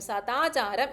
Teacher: പോകും ഓക്കേ അപ്പോ ഇനി അടുത്തൊരു എക്സാമ്പിൾ നോക്കാം സത് പ്ലസ് ആചാരം എന്തുവരും ത ആയതുകൊണ്ട് തയുടെ മൃതുശബ്ദമായ ദ ആഗമിക്കും